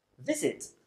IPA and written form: ˈvɪzɪt (visit)